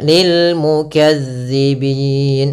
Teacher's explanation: huruf zal kecil, yaitu ujung lidah kita menempel dengan gigi seri atas. Kemudian pelafal bin ada bacaan mad arid disukun.